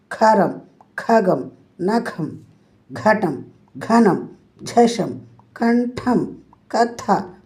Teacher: మహాప్రాణాక్షరాలన్నీ కూడా ఒత్తి పలకాలి పిల్లలు. గాలి బయటకు వచ్చే విధంగా మీరు మహాప్రాణాక్షరాన్ని పలకాలి.